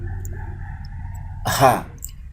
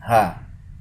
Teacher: kita bisa merasakan bahwa lokasi artikulasinya itu berada pada akar lidah dengan dinding tenggorokan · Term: faringal